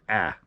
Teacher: i tend to slightly alter the alpha so it's pronounced a little bit more nasal